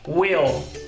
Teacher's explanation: o l ele é prolongado na pronúncia Ou seja você pronuncia Will uma característica muito interessante do tempo